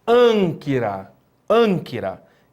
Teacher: Um gama seguido de kappa. Então, você vai ler com som nasalado